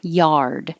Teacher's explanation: you have to open ah and curl your tongue back to make a good strong r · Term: good r